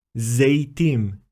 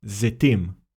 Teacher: some Hebrew speakers, depending on their ethnic origin, may pronounce the Tsere as ‘ey’ instead of ‘e’